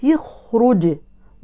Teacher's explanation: حفص يحرك التاء بالكسر للتخلص من التقاء الساكنين